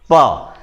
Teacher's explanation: यह जो होठ है यह आपस में चिपक कर छूटते हैं। यह ध्वनि जो है प, जो स्वर है उसको दबाती है और झटके से छोड़ती है। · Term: ओष्ठ व्यंजन